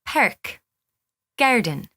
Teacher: where the R sound has special emphasis in the back of the mouth and the throat. But in an Irish accent, it's as if we smile, making the vowel very broad as it comes forward to the front of the mouth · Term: Irish R